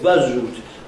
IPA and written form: ˋbʌz ruːt (bus route)